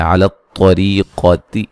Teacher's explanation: را کو باریک پڑھیں گے، را کے نیچے زیر یا مدہ ہے